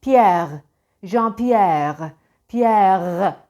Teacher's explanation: fonetiğin de yaygındır yani Fransız fonetiği R sesi genizden gelir veil ağız içinde titremez çok fazla hatta hiç titremez şöyle olur Pierre jean-pierre Pierre genizden gelir Bizdeki